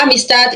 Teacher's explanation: la palabra amistad lleva la mayor fuerza de voz en la última sílaba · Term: sílaba tónica